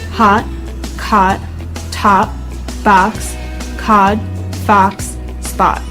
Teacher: o sound in british english it's a rounded vowel sound however in american english it isn't so rounded